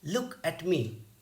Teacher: at and me they are functional words that's why they are not stressed so the pattern in ductile is stressed unstressed unstressed now we